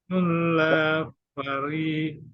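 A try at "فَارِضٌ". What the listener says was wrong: Fa-nya panjang. Faridun. Faridun.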